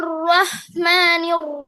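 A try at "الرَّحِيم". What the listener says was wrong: রহিম, হাড়ার উচ্চারণে খেয়াল করতে হবে। রহিম।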